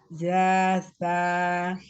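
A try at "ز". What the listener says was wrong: Masih ja itu za. Kayak huruf Z kalau bahasa Indonesia itu za.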